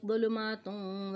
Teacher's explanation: फ़ीही ज़ुलुमातुन, ज़ुलुमातुन वाव आ रहा है आगे, उस पर तजदीद है, यहाँ पे हम इदगाम करेंगे, इदगाम बिलगुन्ना करेंगे, नाक में आवाज़ लेके जाएंगे, और नून तनवीन की जो आवाज़ है ता पर नून दो पेश है, इसको हम मिलाएंगे वाव से।